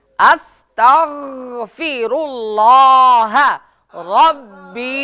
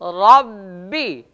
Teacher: অনেকেই কিন্তু ওখানে ভুল করে ওই রব্বিতে লম্বা করে টান দেয় মনে রাখতে হবে রব্বিতে কোন টান হবে না